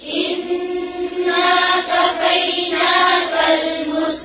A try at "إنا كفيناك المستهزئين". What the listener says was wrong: फिर ईन की आवाज आ रही है फिर से इन्ना